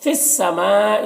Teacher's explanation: یہاں پر جو مد ہے یہ مد متصل ہے، اسے 3-4 الف کو برابر کھینچ کر پڑھتے ہیں